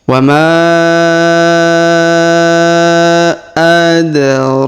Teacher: Huruf ma kita panjangkan 5 harokat ya, pertemuan mat tabi'i dengan alif ya.